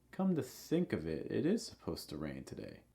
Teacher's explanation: Notice for stress, the main word is on think. Think. Also, the last word, it, you'll notice it will have a rising intonation and it will be held a little long.